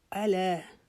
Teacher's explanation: عین کی آواز نکالیں گے لیکن عین کو لمبا نہیں کریں گے کیونکہ اس کے اوپر زبر ہے. اس کو آلا نہیں پڑھیں گے، الا.